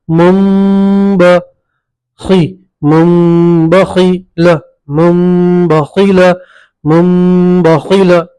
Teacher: تو نون ساکن کو میم سے بدلیں گے، پڑھیں گے مم، اب نون نہیں پڑھیں گے میم پڑھیں گے ، مم ب اخفاء گنہ کے ساتھ پڑھیں گے، مم بخی،